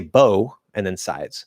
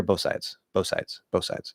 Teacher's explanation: if you're speaking really fast, you don't even need to extend the s. You can just just say bow and then sides.